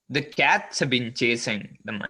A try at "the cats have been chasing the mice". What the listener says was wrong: Yes, that was super good.